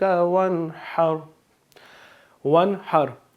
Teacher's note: ہم نے یہاں پہ گنہ نہیں کرنا، یعنی کہ اپنی آواز کو ناک میں نہیں لے کے جانا، بلکہ آرام سے فلو میں جیسے پڑھ رہے ہیں روٹین میں اسی طرح پڑھنا ہے۔ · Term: اظہار